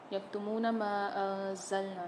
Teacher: میم کے ساتھ الف آ رہا ہے اور مد بھی آ رہا ہے، کھینچ کے پڑھیں گے اس کو